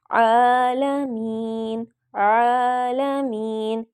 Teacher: حمزہ نہیں پڑھنا، عین پڑھنا ہے، عین کی آواز نکالنی ہے